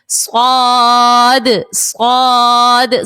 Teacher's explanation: صاد بھی سیٹی والے حرف میں سے ہے، اس کو بھی ہم نے سیٹی کے ساتھ ادا کرنا ہے